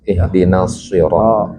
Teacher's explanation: Izhar ro-nya tafkhim ya. Ro yang jelas.